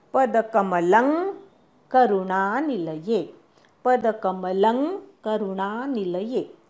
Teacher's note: पदकमलं ल वरचा अनुस्वार आहे, त्याचा उच्चार ङ असा करायचा. क ख ग घ ङ असतो तसा करायचा.